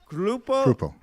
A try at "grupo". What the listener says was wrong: It's an R. It's like an R, dude.